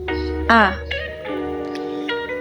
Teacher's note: Yang pertama, pada huruf A. A, pada huruf A, posisi lidah berada di bagian tengah. Bentuk mulut tidak bundar, kemudian terbuka.